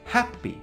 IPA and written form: ˈhæp.i (Happy)